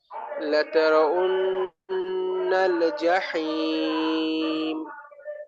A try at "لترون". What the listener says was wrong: লাতারা উন্না ওয়াওয়ের উচ্চারণটা উ যেন না হয় উ উ লাতারাউন্নাল উন পুরো ঠোঁটে রাখা যেন হলকে চলে না যায়।